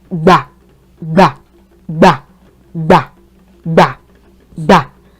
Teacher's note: when you pronounce this syllable, you notice that your voice gets lower. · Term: low tone